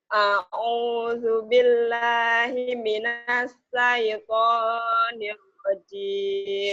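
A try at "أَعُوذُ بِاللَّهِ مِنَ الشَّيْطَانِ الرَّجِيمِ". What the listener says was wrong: Sinnya kurang gede tuh. Sinnya kurang gede. A'udzu billahi minasyaitonir rajim.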